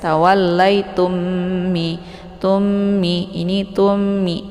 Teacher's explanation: ya kemudian tummi ada mim sukun bertemu dengan mim yang bertasydid ini dinamakan dengan Idgham Mimi cara bacanya didengungkan